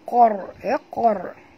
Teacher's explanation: huruf qaf tebal, jangan baca kar tapi baca qor ya, qor. Okey, dan qaf ni tebal, ra pun kena baca tebal, kerana ra ini bila dia mati huruf sebelumnya baris atas, dia kena bunyi tebal.